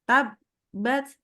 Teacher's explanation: Rapat, huruf ba itu rapat kan? Ba itu makrotnya itu adalah dua bibir disatukan. Hap, berhenti. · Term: syiddah